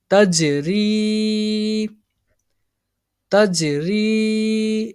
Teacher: next یہ جیم حرف قلقلہ، اس میں جنبش ہوگی